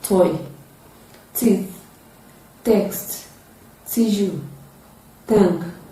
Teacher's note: So T is produced with a partial obstruction of air coming from the oral cavity. It is a voiceless sound. It is produced with the tip of the tongue raised to the alveolar ridge. And then you can say it is a voiceless alveolar plosive sound.